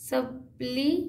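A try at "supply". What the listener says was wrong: सप्ली नहीं लाई जी हाँ सप्लाई पड़ेगा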